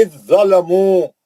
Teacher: जाल को छोड़ देंगे ज़ोय में चले जाएंगे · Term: इदगाम